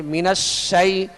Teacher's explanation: شین کی آواز جو ہے آواز منہ میں پھیل کر ادا ہوگی